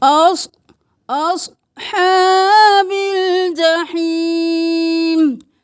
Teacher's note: اصحاب نہیں کرنا، صاد کو موٹا پڑھیں